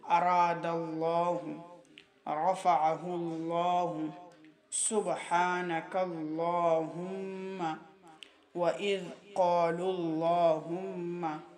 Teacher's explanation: جب لفظ اللہ اور اللہم کے لام سے پہلے فتحہ یا ضمہ ہو تو لفظ اللہ اور اللہم والا لام مفخم پڑھا جائے گا